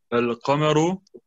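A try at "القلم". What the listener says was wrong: Al-Qalamu. Genau, du hast Qamaru gesagt.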